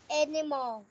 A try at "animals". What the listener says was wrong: Animals. Nhớ chú ý phát âm đuôi nữa nha. Animals.